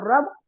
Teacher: رو کے اوپر زبر ہے اس لیے پور پڑا جائے گا